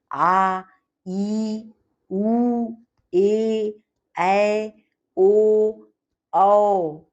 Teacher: इनके उच्चारण में ह्रस्व स्वर के उच्चारण से दुगुना समय लगता है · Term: दीर्घ स्वर